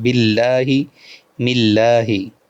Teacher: अल्लाह वाले लाम से पहले बा के नीचे ज़ेर है तो ये भी बारीक पढ़ना है